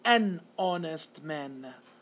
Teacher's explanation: if it's a silent H, we're going to say an honest man, because we do not pronounce the H here